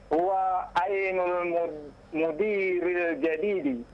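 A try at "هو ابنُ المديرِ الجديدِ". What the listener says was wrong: Tidak mungkin huwa ainu. Tidak mungkin itu. Itu ba. Huwa bnu.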